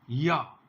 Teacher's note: ये शुद्ध तालव्य ध्वनि है